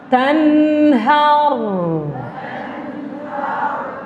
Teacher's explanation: Daripada makhrajun nun tu lidah tu kita tarik ke belakang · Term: huruf nun